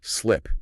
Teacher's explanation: For the short I in slip, your jaw has to drop slightly, and your mouth must remain entirely relaxed.